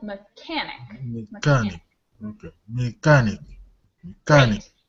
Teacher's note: has the stress on the second syllable